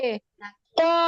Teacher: জিহ্বার গোড়ার তার একটু সামনে এগিয়ে তার উপরে তালুর সাথে মিশিয়ে কাফ জিহ্বার বরাবর গোড়া উপরে হতে একটু আগে বাড়িয়ে তারপর আবার উপরের তালুর সঙ্গে লাগিয়ে উপরে তালুর সাথে কাফ। · জিহ্বার গোড়া তার বরাবর উপরের তালুর সাথে মিশিয়ে